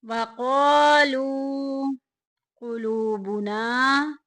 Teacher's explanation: قلو میں بھی دیکھیں واو ساکن پیچھے پیش، واو مدہ کا قاعدہ جاری ہو رہا ہے، ایک الف کے برابر لمبا کریں گے۔ قلوبنا میں دیکھیں الف پیچھے زبر، الف مدہ کا قاعدہ جاری ہو رہا ہے، ایک الف کے برابر لمبا کریں گے۔